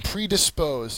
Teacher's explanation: predisposed has the third syllable accented